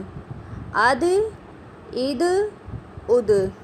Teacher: دال کلکلا ہے، اوکے، اس لیے آواز مخرج سے لوٹ کر آ رہی ہے